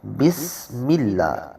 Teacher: سین میں آواز، اس میں سیٹی کی آواز پیدا ہوگی